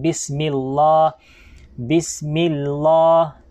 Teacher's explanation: since na ang vowel po ng mim ay kasra, okay, kasra, na kung kaya ay maging manipis ang pagbasa natin dito ng Allah